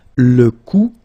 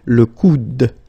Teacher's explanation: you don't insist on this final E, it only gives you the sound of D at the end